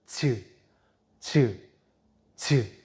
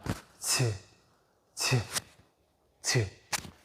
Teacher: 자, 요걸 할 때 센 입천장에 이렇게 가면서 혓바닥이 닿진 않고 가면서 막아요. 즈를 발음하려면 막혔다가 터뜨리는 게 느껴져요? 즈. 근데 바람도 새어나가요. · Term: 파찰음